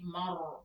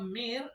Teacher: Kalau sukun itu mengikuti baris sebelumnya. Misalnya kalau barisnya fathah menjadi mar berarti dia tebal. Tapi kalau mir ya tipis